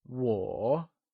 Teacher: it is pronounced using a falling rising tone